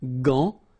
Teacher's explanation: But in that case, you've got this A-N, so it's nasal, gant, and then final T is not pronounced here